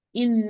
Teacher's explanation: نون متشدة, most complete غنة